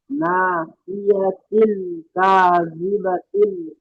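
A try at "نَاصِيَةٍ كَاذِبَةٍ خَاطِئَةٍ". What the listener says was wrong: জি, এখানে একটা গুন্না আছে, এই নাসিয়া তিনটা, এটা গুন্না হবে নাসিয়া তিন কাযিবাতিন খাতিয়া। মানে এখানে তানবিনের পরে হরফে ইখফার 15টি অক্ষরের মধ্যে কাফ এসছে, তাই এটা নাকে তুলে একালিফ গুন্না করতে হবে।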